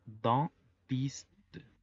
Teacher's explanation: La combinación de EN hace que se pronuncie como una A gangosa